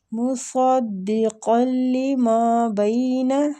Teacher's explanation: صاد بھی مستعلیہ حروف ہے، اس کو بھی پور پڑھیں گے